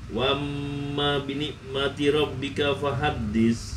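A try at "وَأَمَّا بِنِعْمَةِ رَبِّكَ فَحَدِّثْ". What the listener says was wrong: Ainnya ya, bi ni'mati rabbika. Nah, kalau bini, kalau ainnya kurangin jadi bini ini, bini. Dinikmati aja di ain itu dari mana? Wastul halki ain sama ha ini sama nih.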